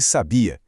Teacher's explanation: Se a força tá na penúltima sílaba sem acento gráfico, a gente tem o verbo ele sabia. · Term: sílaba tônica